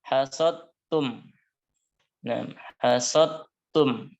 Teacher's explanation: maka dal sukunnya dimasukkan ke ta. Sifat qalqalahnya hilang menjadi hasodtum. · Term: idgham kamil